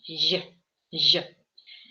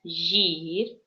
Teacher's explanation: она говорит как «ж», но более таким с мягким произношением